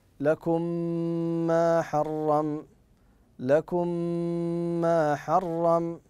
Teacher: لان الميم الاولى ادغمت في الثانيه اي دخلت في الثانيه ادخلت فيها وسمي بالمثل لماذا تفضل احسنت لان الميم ادغمت في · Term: ادغام المثلين الصغير